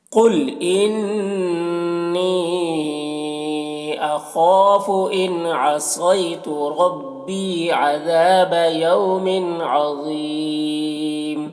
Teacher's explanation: عظیم میں ضا کو پر پڑھیں گے، حروف مستعلیہ میں سے ہے، اور یہاں پر بھی وقف کریں گے تو مد عارض وقفی ہوگا، تو اس طرح سے پڑھیں گے۔ · ربی میں را کو پر پڑھیں گے، یہاں پر یا مدہ ہے، ایک الف کے برابر کھینچیں گے